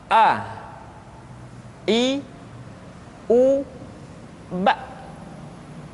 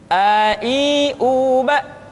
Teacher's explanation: Makhraj ketika mengucapkan huruf A berada pada tenggorokan yang terjauh.